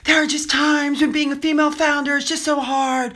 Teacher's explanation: starts out with her breathy voice.